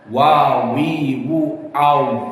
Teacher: meskipun sama-sama syafatan, maka waw istidar dengan dibulatkan, monyong. Wa, wi, wu, au, dan ada lubang sedikit untuk keluar hawa.